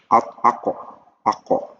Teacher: Nah, dia syiddah itu tertahan alirannya. Ako. Dia pengen ngeluarin cuman tertahan dengan alirannya tertutup.